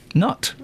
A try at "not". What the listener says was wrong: You're saying nut. You know that, don't you?